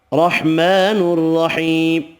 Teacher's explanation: کھڑی زبر یا مدہ ایک ایک الف کی مقدار میں کھینچ کر پڑھیں گے، را زبر کی وجہ سے پر پڑھیں گے